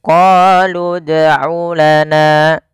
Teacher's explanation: Sehingga mereka huruf-huruf mad ini ketika bertemu dengan huruf sukun itu tidak dianggap lagi. Kemudian pada lafal huruf dal ini harus kita pantulkan bunyi suara dalnya, karena huruf dal termasuk salah satu sifatnya adalah qalqalah, yaitu memantul.